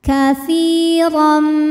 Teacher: Huruf ra dibunyikan secara tafkhim karena ra berharokat fathah tanwin, maka ra dibunyikan dengan tebal